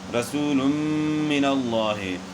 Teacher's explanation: رسول من اللہ، دو پیش کی تنوین کے بعد حروف جر ملون میں سے میم ہے، تو دو پیش کی تنوین کا میم میں ادغام ہوا مع الغنہ